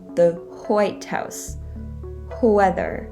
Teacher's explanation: some american dialects from the southern states or as we call it the south they will pronounce the wh sound as hua